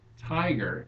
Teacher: it's the first syllable that is stressed it's a trochee